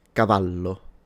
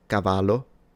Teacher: the double L in Italian is just pronounced as a longer slash stronger version of the single L. So, Cavalo, if this was spelled with one L in Italian, I would read it cavalo.